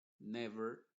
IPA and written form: ˈnɛvər (Never)